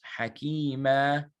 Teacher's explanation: Because originally it's hakiman, but you're stopping on it, so it becomes hakima.